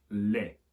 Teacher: They haven't just got rid of the C, they've also got rid of the sound of the T as well. You can still see it written there, but the sound's gone altogether and it simply ends up being lait.